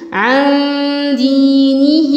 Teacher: في ياء مد طبيعي وفي مد صلة صغرى حركتين